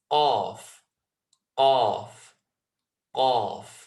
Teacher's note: it's the complete connection of the furthest part of the tongue towards that soft bit of flesh. And as I say, you can feel it by just running your finger or your tongue back and feeling where it's not bony anymore.